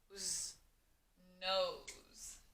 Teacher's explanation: that s almost sounds like a z but it is an s sound